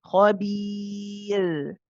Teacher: So as you say the ra, because remember it's very easy to do, because when the tongue comes up for the makhraj of the ra, because of the way that the inhiraf is, remember with the ra, you're passing the sound through the gap between the tongue and the upper palate. Because that gap becomes quite small because you've lifted the tongue up, it's very easy to sort of hold back on the voice and just let the breath sort of come through.